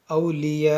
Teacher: یہاں پر دیکھیں جیم بنا ہوا ہے، جیم پر رکیں گے، یہاں پر آیت کریں گے یعنی یہاں پر رکیں گے تو اس حمزہ کو ساکن کریں گے، اولیاء۔ اور جب حمزہ ساکن نہ ہوگا تو اس میں جھٹکا ہوگا۔